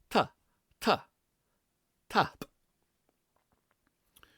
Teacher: But in Gaelic we have a dental T which comes off our teeth